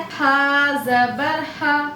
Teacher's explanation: بیچ حلق سے ادا کرنا ہے ہا کو